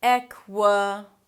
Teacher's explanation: And then it's a 'k' sound and an W immediately - "kwuh" "kwuh". Obviously there is a schwa there, so it's a really relaxed vowel